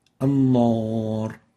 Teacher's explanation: This is basically giving the noon a tafkhim, velarization